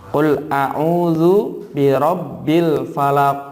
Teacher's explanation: kalau dibaca kemudian dalam keadaan sukun harus memantul bacaannya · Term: Qalqalah